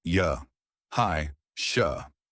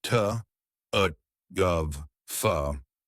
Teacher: By and large, it's the schwa sound that we are using in the weak form. Not always, but usually.